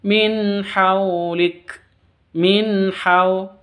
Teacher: non sukun bertemu dengan ha, jelas bacanya, non sukunnya jelas, haknya jelas, bacaan izhar halki